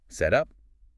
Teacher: It becomes what linguists call an alveolar flap or a flap T. Instead of stopping the air completely, your tongue just briefly bounces off the roof of your mouth.